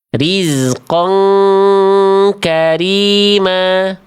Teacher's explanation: Jadi dibacanya jangan sampai rizqon kariman. Ini dibacanya berarti eng ya karena ketemu kaf nih fathatainya berarti dibacanya rizqon karima.